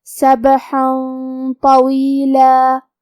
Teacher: کلمت طویلہ میں طا کو ہم موٹی آواز میں پڑھیں گے. آخر میں حرف اللام پہ تنوین زبر ہے. · طا حروف الاخفاء میں سے ہے اور اخفاء کا معنی ہے چھپا دینا، تو ہم یہ تنوین کو چھپاتے ہوئے اور غنہ کے ساتھ یہ حکم کو ادا کریں گے. کیونکہ طا حروف التفخیم میں سے ہے اور غنہ اپنے اگلے والے حرف کا حکم لیتا ہے تفخیم میں اور ترقیق میں، تو ہم حکم الاخفاء کے غنہ کو بھی تفخیم سے مطلب بھاری آواز میں ادا کریں گے سبحا طویلا.